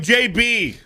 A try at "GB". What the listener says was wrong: You said the G was a J.